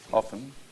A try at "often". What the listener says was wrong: No, T is silent.